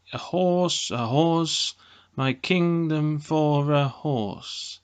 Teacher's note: a metrical foot of two syllables where the first syllable is unstressed and the second syllable is stressed